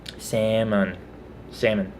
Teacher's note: I've always grown up not pronouncing the L.